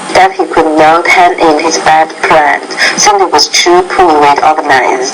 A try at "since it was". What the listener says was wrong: This word here, since it was, just make sure you pronounce the S at the end.